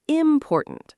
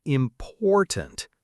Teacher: Some learners say important, stressing the first syllable.